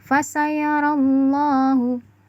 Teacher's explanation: ada lafaz Allah terbaca tafkhim atau terbaca tebal